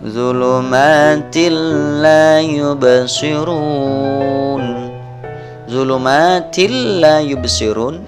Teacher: zulum bancil layubsirun zhulumatil layubsirun ini adalah hukum bacaan Idgham bilagunnah bunyi suara tanwin dimasukkan ke dalam huruf idgham berupa lam · Bunyi suara tanwin dimasukkan ke dalam huruf idgham berupa lam. Zulumatil, tanwinnya hilang.